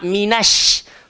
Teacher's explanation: Ramai orang muncung pada shin. Bila dia muncung shin, nanti dia bawa bunyi tebal, shin, tak nak.